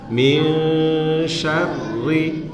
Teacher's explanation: Ro tasdid itu ya, getarnya sekali aja. Jangan min syarri ya, sekali aja getarnya.